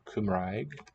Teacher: the r is a trill at the tip of the tongue